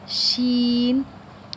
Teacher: زبان کا درمیان اور تالو کے درمیان سے لگے تو ادا ہوتا ہے شین